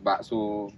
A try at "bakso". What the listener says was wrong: Tidak pakai K.